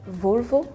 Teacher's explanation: the first O is more like the O sound. The last O is kind of like U.